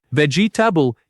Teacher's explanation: This word is often said with four syllables, vegetable, but the natural pronunciation only has three.